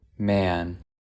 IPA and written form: mɛən (man)